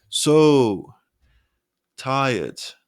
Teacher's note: the word so is stretched but stays on the same pitch making it sound more expressive on the other hand held inflection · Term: held pitch